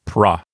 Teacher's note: P and R together makes a stop plus liquid. So those two letters will sound together as one unit